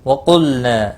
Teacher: لام ساکن کو ہلانا نہیں ہے، قاف مستعلیہ ہے، پر پڑھا جائے گا۔ نہ، ہا ساکن ہے، اس کو بھی ہلانا نہیں۔